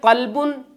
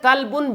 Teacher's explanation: ایک ہے قلبن موٹے قاف کے ساتھ، اس کا معنی ہے دل، اور دوسرا قلبن باریک قاف کے ساتھ